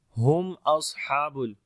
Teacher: میم ساکن کے بعد حمزہ آگے، یہاں پر میم کا اظہار کریں گے، صاد کو موٹا پڑھیں گے، حروف استعلا میں سے ہے اور صفت ہمس اور صفیر دونوں آئے گی، ہا کو لمبا کریں گے، کھڑی زبر ہے۔